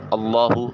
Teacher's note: اللہ اس میں جلالت یعنی اللہ یا اللہم سے پہلے والے حرف کے اوپر زبر یا پیش آ جائے تو اس میں جلالت کی لام کو موٹا اور پر کر کے ادا کیا جاتا ہے۔ اللہ لام کے اوپر کھڑی زبر ہے جس کو الف المدیہ صغیرہ کہا جاتا ہے، اس کو ایک الف کے قیم مقام لمبا کرتے ہیں۔